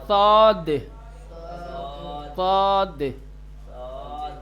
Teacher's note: گلے میں تھوڑا ہوا بھرنی پڑے گی، آواز تھوڑی بھاری بنانی پڑے گی. · صاد کو ادا کرنے میں پرحجم اور بھاری ادا کیا جاتا ہے، اس کو تھوڑا موٹا بنا کر کے بھاری بھرکم بنا کر کے، یعنی اسی سین کو اگر مفخم کا مطلب ہوتا ہے موٹا بنا دیں بھاری کر دیں تو وہی سین صاد ہو جائے گا.